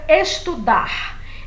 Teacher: Então vejam, a palavra estudar, eu não preciso acentuar, porque ela é uma oxítona, a sílaba tônica é o ar, né, no final, e como termina em R, o R já atrai a tonicidade.